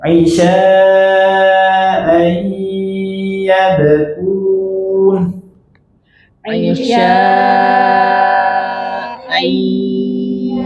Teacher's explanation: kalau ada nun tanwin bertemu huruf ya, waw, mim, nun, maka wajib kita gunnahkan, dan gunnahnya panjang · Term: idgham bi gunnah